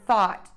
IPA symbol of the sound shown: θɔt